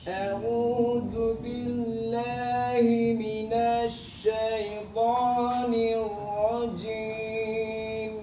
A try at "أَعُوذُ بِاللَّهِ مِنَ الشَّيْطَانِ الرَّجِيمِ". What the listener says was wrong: Oke, jimnya balik lagi. Jim. Jadi jim itu dia nggak becek. Ci itu kurang tepat atau jim juga nggak. Jadi ji nggak ada nafas, nggak ada aliran suara. Putus.